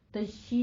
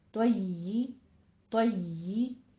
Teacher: تو کو پر پڑھنا ہے، حروف مستعلیہ ہے، تشدید کو ادا کرتے ہوئے یا کی بھی تشدید ادا کرنی ہے، تشی نہیں کہنا، طی، طی۔